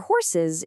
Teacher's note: for horses, it's a whole extra syllable, uz.